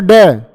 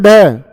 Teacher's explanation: एकदम से जीभ लगती है मूर्धा पे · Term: उत्क्षिप्त व्यंजन